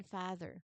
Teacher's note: It's a much longer, more relaxed, open sound, similar to the vowel sound in words like car or art. You hold the sound for a slightly longer duration.